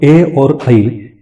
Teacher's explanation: एदैतो कंठतालु मतलब ए और ऐ, इन अक्षरों का उत्पत्ति स्थान 2 जगह पे होता है, वो है कंठ और तालु। हमारा कंठ का इस्तेमाल भी हो जाता है, तालु का भी इस्तेमाल हो जाता है, सो इसलिए एदैतो कंठतालु।